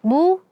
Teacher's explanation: karena dia dommah jadi kedua bibir kita harus monyong